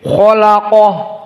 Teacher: Kho tafkhim. Dan lam harfu tarkik. Dan qaf dalam keadaan mufakhomah. Maka lam dijepit di antara dua tafkhim. Dan ha dalam keadaan hams, maka kholaqoh, dikeluarkan haknya, nafas.